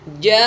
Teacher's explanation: Kalau fathah diikuti alif, kasrah diikuti ya sukun, dhammah diikuti wawu sukun, lalu ketemu hamzah di dalam satu kalimat, maka namanya mad wajib. Panjangnya 5 sampai 6 ketukan.